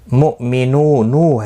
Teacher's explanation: واو مدہ ہے، ایک الف کی مقدار کے برابر کھینچ کر پڑھیں گے، اور وقف کی صورت پہ نون ساکن پڑھا جائے گا۔